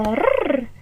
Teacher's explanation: we can call that vibrating sound, the rrrrrr, a trill